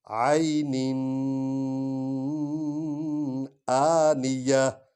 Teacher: عین یہ یا جو ہے اس پر بھی جزم ہے، اور یا سے پہلے اگر زبر والا حرف ہو تو اس کو لین انداز میں پڑھتے ہیں، اس لیے عین نہیں پڑھ رہے بلکہ عین، عین آنیہ، آ کو لمبا کر رہے ہیں کیونکہ اس پر کھڑا زبر ہے